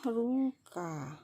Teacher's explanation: Kata ruka. Tekanannya ada di A.